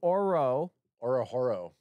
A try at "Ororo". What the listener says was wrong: You don't pronounce the H. It's like row, row, row your boat. Ororo is how you pronounce his name. Ororo.